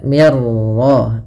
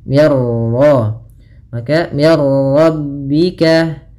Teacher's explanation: Idgham itu memasukkan, maka masukkan nun ke ra sehingga suara nunnya hilang. Nah, di sini idghamnya idgham kamil.